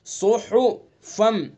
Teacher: زبان کی نوک ثنا سفلا کا کنارہ اور کچھ اتصال ثنا علیہ سے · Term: صاد کا مخرج